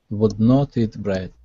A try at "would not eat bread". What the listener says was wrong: Okay, give me an ah instead of not. It's na, not. Would not eat bread.